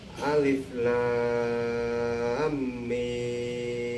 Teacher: kalau ditulis satu-satu Pak itu makanya mimnya bertas bertasydid menjadi idgham jadi Alif lamnya panjang 6 harokat karena itu disebut mad lazim Harfi